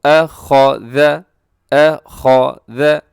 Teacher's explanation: نرمی سے پڑھا جاتا ہے، موٹا بھی نہیں کرنا، سیٹی بھی نہیں اس میں ہے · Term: ذال